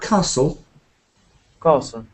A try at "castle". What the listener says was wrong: no s sound in it